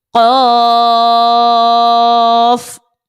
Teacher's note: مد لازم کو 6 حرکت کے برابر کھینچ کر پڑھنا ہے